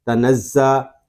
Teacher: زا اس میں سیٹی کی آواز بھی آئے گی